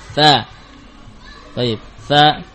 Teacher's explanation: keluar dari ujung lidah dengan ujung gigi seri atas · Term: huruf tsa